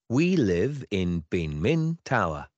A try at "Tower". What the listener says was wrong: Rồi, nó là tower, chứ không phải là town nha. Tower, tower mà chữ người ta đọc nhẹ là một xíu, có thể mình sẽ khó nghe, nó là tower.